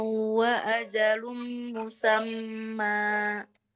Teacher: Dan musammannya ini panjang. Sudah benar tadi. Tadi baca panjang kan ya dua harkat.